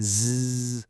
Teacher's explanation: Feel that vibration, that little buzz? That's a voiced sound. The only thing separating an S from a Z is that buzz.